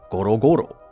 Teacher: Those low round vowels and that rolling R sound actually mimic the physical sensation of something heavy and round moving.